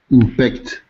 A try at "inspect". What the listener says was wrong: I want to hear the S inspect inspect perfect inspect very good very good